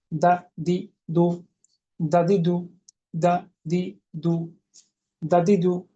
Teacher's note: এরপর হলো দাল, দাল যদি জিজ্ঞেস করি কোথা হতে, জিহ্বার আগাটা উপরের দাঁতের গোড়ার সঙ্গে লাগিয়ে, কিভাবে? পাতলা ও পার্শ্বমুখী কলকলা, দা দি দু, দাদি দু, দা দি দু, দাদি দু।